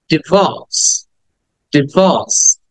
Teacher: ওই আরটাকে সাইলেন্ট করে হয়, আরটাকে উচ্চারণ করা হচ্ছে না ব্রিটিশ অ্যাকসেন্ট অনুযায়ী